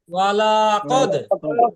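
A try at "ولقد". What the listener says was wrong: ভাই ও লা টান দিয়ে না মন ভাই, লা টান দেওয়া যাবে না।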